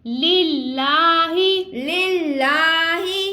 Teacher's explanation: اب دیکھیں لام اللہ عز و جل کے لام سے پہلے زیر ہے تو ہم اس کو باریک پڑھ رہے ہیں لیکن لام کو ہم کھینچ کے ادا کر رہے ہیں کیونکہ کھڑا زبر ہے